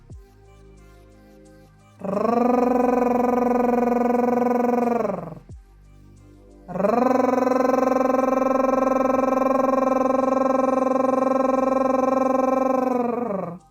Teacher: приготувалися Спочатку ми вдихаємо через носик так вдихнули язик пам'ятаємо що ротик злегка відкритий язик вгорі за верхніми зубами торкається альвеол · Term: звук р